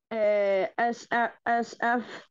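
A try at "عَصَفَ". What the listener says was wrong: Asafa not so, Asafa with ayn. Asafa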